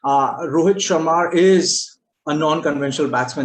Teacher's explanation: between the A of Sharma and I of is, you need to introduce a small R